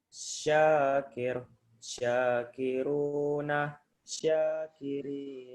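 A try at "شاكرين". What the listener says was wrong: Dibaca, belakangnya dibaca mati. Syakirun, syakirin, dimatikan huruf belakangnya. Syakir.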